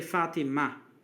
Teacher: because it's a name by itself you can just say Fatima you don't say the T sound at the end